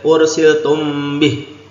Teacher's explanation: mim sukun ketemu ba Ini Ikfa Syafawi ya dengung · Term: ihfa safawi